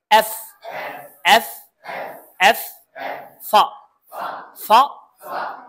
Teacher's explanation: উপরের দাঁত নিচের ঠোটে